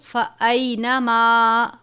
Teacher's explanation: آواز ناک میں نہیں لے کر جانی میم کی